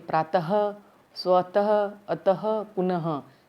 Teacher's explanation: जो दो डॉट है इन्हें विसर्ग कहते हैं और इसकी ध्वनि ह के समान निकलती है।